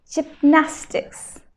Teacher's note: Now, where's the stress? In the second syllable.